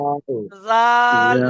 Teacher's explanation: জিভের আগাটা উপরে দাঁতের আগার সাথে